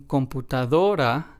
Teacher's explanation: in computadora, we stress the second to last syllable